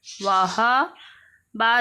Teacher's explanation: یہ ہا حروف حلقی میں سے ہے، اس کو سینٹر والے حلق سے ادا کریں گے